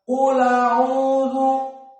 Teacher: lamnya yang sukun menjadi fathah dan hamzahnya dihilangkan, maka dibaca qul a'udhu seperti itu.